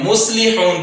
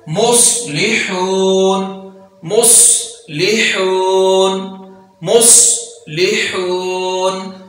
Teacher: صاد میں سیٹی بھی ہے اور اس کو پر بھی پڑھا جا رہا ہے · سین میں سیٹی ہوتی ہے لیکن اس کو باریک پڑھتے ہیں، ہم عام طور پر یہاں سین ہی پڑھ جاتے ہیں، مصلحون پڑھ جاتے ہیں، جبکہ ہم نے پر پڑھنا ہے